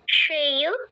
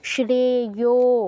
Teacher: এখানে প্লুত মানে দীর্ঘ থেকেও বেশি এখানে আমাদের বেশি টাইম নিতে হবে